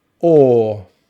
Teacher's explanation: the middle vowel sound is a long vowel sound or or we make this by rounding the lips but dropping the jaw a little bit and the tongue comes back into the mouth